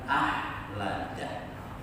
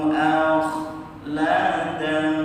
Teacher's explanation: Jadi bagian ada ngoroknya sedikit, posisikan di tenggorokan bagian atas di situ. Bukan seperti ha. Nah, ini dia masuk di al-huruf al-halqiyah. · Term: kha